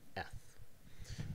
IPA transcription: ð